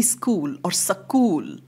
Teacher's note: sound for example he would make it a school or school some kind of way of bringing in a vowel sound so that the cluster is broken